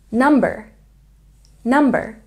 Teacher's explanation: there's a stress on the first syllable in digit digit and a stress on the first syllable in number